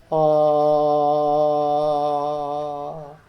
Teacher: നമ്മൾ ആ എന്ന് ഉച്ചരിക്കുമ്പോൾ വായു പുറത്തേക്ക് സുഖമായിട്ട് ഒരു തടസ്സവുമില്ലാതെ വരികയാണ് ചെയ്യുന്നത് അങ്ങനെ സുഖമായിട്ട് ഒരു തടസ്സവുമില്ലാതെ വായു പുറത്തേക്ക് ഒഴുകണമെങ്കിൽ വായ തുറന്ന് ഇരിക്കണം വായ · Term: സ്വരങ്ങൾ